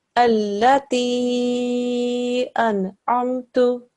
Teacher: So an al-maddatu saghira is a medium long elongation · But the presence of this symbol at the top, this al-maddatu saghira symbol, means that you have to stretch that madda sound, which is normally just 2 seconds, for between 3 to 5 seconds